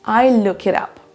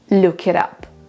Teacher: Dans cet exemple, on a même deux fois des liaisons, donc on a look it et it up.